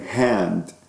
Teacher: that's the voiceless glottal fricative